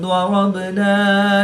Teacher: ضاد حرف مستعلیہ میں سے ہے تو اس کو پر یعنی موٹا پڑھیں گے۔